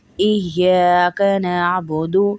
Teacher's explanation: ایہ سختی ہوگی، ایا نہیں پڑھیں گے، ایہ ای 2 آواز آئیں گی یا کی، کیونکہ یا کے اوپر تشدید ہے